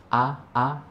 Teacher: Dalam kalimat ta'awudz ini yang perlu kita perhatikan, yang pertama adalah huruf pertama dari kalimat ta'awudz, yaitu huruf hamzah atau alif. Yang mana huruf hamzah atau alif ini keluar dari tenggorokan, yaitu aqsal halqi, ya, tenggorokan paling dalam, ya, paling ujung. Nah, dalam melafalkan alif atau hamzah ini perlu kita ketahui itu seperti ada getaran, ya, a.